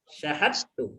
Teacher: Idgham sempurna, ya. Maka dalnya dimasukkan ke ta, tidak ada suara dal lagi